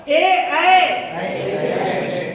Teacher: ए कंठ तालु, कंठ से भी निकल रही और तालु से भी